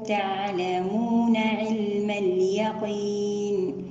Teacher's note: تعلمون نأتي بالتوسط لحرف العين وذلك ببينيته